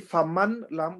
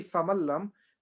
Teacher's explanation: So idgham, yeah. So we ignore the noon. We don't say faman lam. We say famal lam, but we don't do gunna.